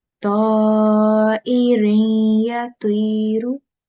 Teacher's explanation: Likewise here, we have a tanween here on ra, and then following that we have ya mushaddad. So this needs to be again nasal sound for 2 seconds.